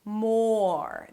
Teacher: Here, we have the M sound then the "or" as in "for". Round your lips for the 'oh' but keep your tongue down so it doesn't go up too soon for the R - "more". Then you drop to the R - "more".